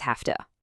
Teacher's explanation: The V sound basically gets ready for the voiceless T that's coming and it becomes voiceless itself. And what's a voiceless version of V? It's an F sound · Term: Assimilation